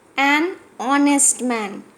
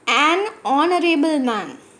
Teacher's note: Here h is silent and is starting honest